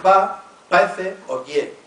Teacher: Es interesante el cambio de la pérdida de la R simple intervocálica